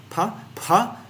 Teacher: let's see p pa yeah immediately lips are activated p pa put in some aspiration there with the extra H added